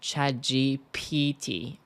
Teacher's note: The stress in GPT is in the first syllable, G.